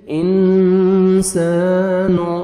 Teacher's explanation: میم مشدد ہے، غنہ کریں گے، نوز میں ساؤنڈ لے کے جائیں گے. اخفا اور غنہ نوز میں ساؤنڈ لے کے جانے کو بولتے ہیں. · رل ان اخفا کریں گے، نون ساکن کے بعد حروف اخفا میں سے سین ہے، نوز میں ساؤنڈ لے کے جائیں گے. سین الف مدہ 1 سیکنڈ آپ نے سین کو کھینچنا بھی ہے